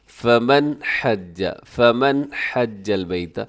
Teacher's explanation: جب آپ نون ساکن بولتے ہیں تو اس وقت ایک دفعہ تو آواز ناک میں جاتی ہے، ٹھیک ہے، لیکن وہ ہوتی کوئی 1 سیکنڈ کے لیے ہے، تو اسے کہا جاتا ہے غنہ آنی، یعنی جو آنن فانن ادا ہو جاتا ہے۔